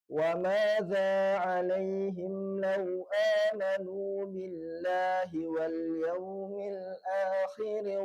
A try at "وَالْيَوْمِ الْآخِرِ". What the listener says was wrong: Parahnya di hamzahnya nanti. Akhir.